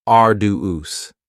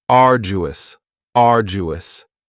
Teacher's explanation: you don't hear that D sound that much. It's not very strong. It almost sounds a little like a J. · arduous has 3 syllables, and the stress is on the first syllable, arduous. Now, you don't hear that D sound that much.